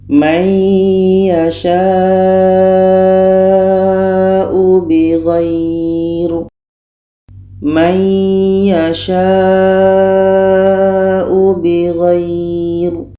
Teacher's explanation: Jadi sya ini kita panjangkan karena ada tanda mad bertemu hamzah dalam satu kalimah. Ini mad wajib muttasil.